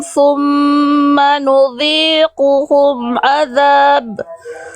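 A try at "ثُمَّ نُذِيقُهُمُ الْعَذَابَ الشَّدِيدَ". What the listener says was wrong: Nudhiquhumul, bukan nudhiquhum azab.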